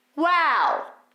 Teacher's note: The main vowel, the main open wide vowel is an ah or an ah. That then closes into a ooh, because it's wow.